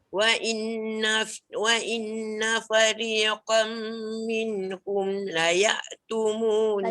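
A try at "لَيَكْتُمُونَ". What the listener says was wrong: Tak jadi. Dia jadi layak aje. Kalau layak dia jadi hamzah. Layak.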